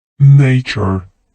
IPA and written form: ˈneɪʧə (Nature)